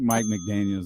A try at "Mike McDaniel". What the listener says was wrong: No S. Mike McDaniel.